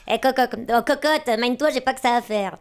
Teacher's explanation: dans les années 50, tout le monde parlait du nez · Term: voix de gramophone